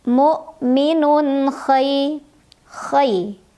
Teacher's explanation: Jadi cara membacanya adalah huruf tanwinnya, huruf yang berharokat tanwinnya dibaca dengan jelas. Jadi tanwinnya masih bunyi an.